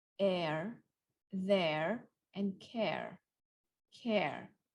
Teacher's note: if it's an American way they have the r